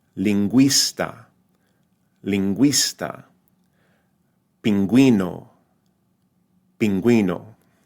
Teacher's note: theat right then it's pronounced like a w right so beru the U now sounds more like a w